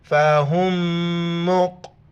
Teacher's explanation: فہم، یہ میم اس میم میں ادغام ہو جائے گا تو اس میم کو ہم نہیں پڑھیں گے، ہا کو ڈائریکٹ میم کے ساتھ ملائیں گے دوسرے میم کے ساتھ اور ناک میں آواز پیدا کریں گے